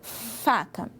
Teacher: Tem um vento agora, não é plosivo, ó.